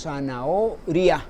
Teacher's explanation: Tenemos un diptongo, porque decimos zanahoria, pronunciamos la R, la I y la O en la misma sílaba